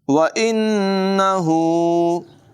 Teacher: व इन्नहु, नून मुशद्दद में हमेशा गुन्ना होता है, यहाँ भी गुन्ना करेंगे। हा की आवाज़ हलक़ के निचले हिस्से से अदा करेंगे। उल्टा पेश है, इसे भी लंबा करके पढ़ेंगे।